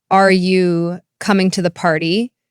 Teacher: For example, in a question like, are you coming to the party? The voice will typically rise at the end, showing it's a yes or no question.